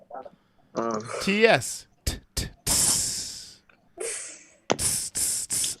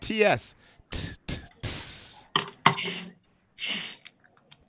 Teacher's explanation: there's no voice in this right all that sound is coming from your mouth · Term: TS sound